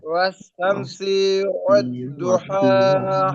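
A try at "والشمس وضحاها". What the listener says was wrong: আপনি বলতেছেন ওয়াশ-শামসি ওয়াদ্দু, ওয়াদ্দু না তো, ওয়াদু, ওয়াদু, এখানে তাসদিদ নাই। দদের উপর কি তাসদিদ আছে? হ্যাঁ, ওয়াদুহাহা।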